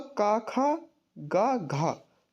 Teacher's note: का वर्ग का मतलब का खा गा घा, ये चारों, ठीक है। तो इनका जो उच्चारण स्थान होता है वो होता है कंठ। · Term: कंठ ध्वनियाँ